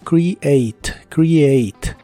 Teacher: la primera e de esta palabra se pronuncia como I y la a se pronuncia como e por eso es create create la e del final no se